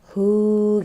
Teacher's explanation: Nah, sebelum ha dhamir ini ada huruf yang berharokat atau huruf hidup. Jadi panjangkan ya 2 harokat.